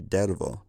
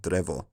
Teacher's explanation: metathesis, when two sounds flip places